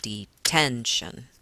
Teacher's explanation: if I look at detention I put that stress on that middle syllable